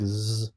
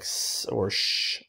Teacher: you have some that are voiced like Z versus an unvoiced like S or Sh